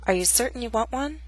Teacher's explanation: this statement has two glottal stops certain and want one the final T is followed by a consonant sound what one